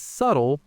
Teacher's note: the B is a silent ghost letter. It's there in the spelling, but you absolutely do not pronounce it.